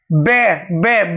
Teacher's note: दोनों होठ आपस में मिल रहे हैं, इसलिए ओष्ठक होगा।